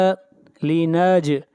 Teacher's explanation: जीम के ऊपर क़लक़ला करेंगे